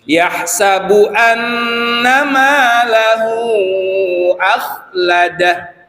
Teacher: tetapi ketika dia di wakaf maka madnya hilang ha dhomirnya harus mati